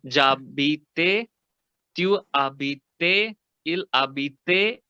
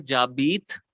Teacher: आपने लास्ट में ए का साउंड ऐड कर दिया ई के ऊपर